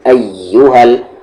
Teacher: آ کو یا میں ملانا ہے آپ کو زور سے، تشدید ہے، زور سے ملائیں گے اور یہاں پر ذرا سا آواز کو تیز رکھیں گے.